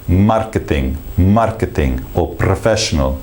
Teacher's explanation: it's a softer sound, no tapping against the top of the mouth within the English R.